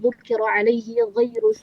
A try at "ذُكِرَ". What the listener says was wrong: bukan dzukira, tidak ditasydid. Dzukira, bukan dzukira.